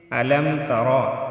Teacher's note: را کو موٹا ادا کریں گے، را کے اوپر زبر ہے، اس کو ہم موٹا ادا کریں گے